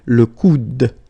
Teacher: you don't insist on this final E, it only gives you the sound of D at the end